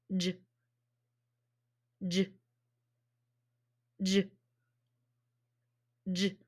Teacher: it's vibrating so that means it's voiced